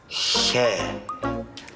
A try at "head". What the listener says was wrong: No. Head. No, debes abrir un poco más la boquita. Head. Head.